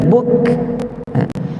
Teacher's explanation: Kaf ni syiddah, yakni suara kita tertahan bila kita sebut dia, tetapi dia syiddah yang hamas. Yakni bila kita sebut buk, mula-mula kita makhraj tutup rapat, buk, kemudian lepaskan angin, buk.